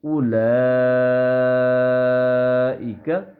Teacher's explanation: او ایسے نہیں پڑھیں گے بلکہ اولا فوراً لام کے ساتھ اس کو ملا دیں گے الف کو. اولئک شاباش.